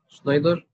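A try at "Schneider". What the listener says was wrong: شنايدر شنايدر خلي بالك الإر ما بنطقش. شنايدر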